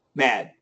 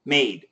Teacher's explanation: They're both single syllables. There's no diphthong. The first one is short. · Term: short A